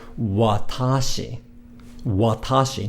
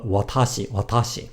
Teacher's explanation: notice again how the first vowel isn't ah but it's uh watashi and this is what's known as vowel reduction it's something